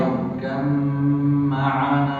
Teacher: Ra-nya tebal, kemudian mimnya itu ditahan. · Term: idgham mutajanisain